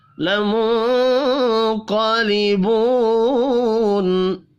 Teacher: لیبو واو مدہ ہے، ایک الف کے برابر کھینچ کر پڑھیں گے